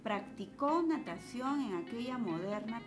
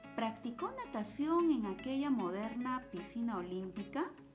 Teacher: notamos de que el tono necesariamente baja porque es una afirmación pero podría cambiarse a una pregunta subiendo en el tono